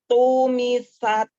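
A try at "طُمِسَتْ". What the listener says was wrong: Belum tampak tak hamasnya pada tak sukun. tempelin jangan ditekan ya, ke huruf taknya, tak sukun. Lalu dilepaskan makhrajnya, dilepaskan alisannya, lepaskan dari makhraj huruf ta ya, dari nempel tuh lepaskan sambil dikeluarkan nafasnya.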